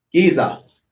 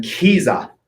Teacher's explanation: So the first one's unaspirated, no breath of air.